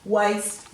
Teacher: And then down here, when we say waste, we know that there's no H after the W, because if you say it, waste, there's no air after the W, so there's no H there